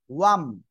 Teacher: ওয়াও দুই ঠোঁট গোল হবে।